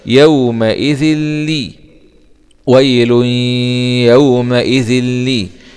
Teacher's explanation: ذال كسرتين مع الإدغام من غير غنة في اللام المشددة مع الكسر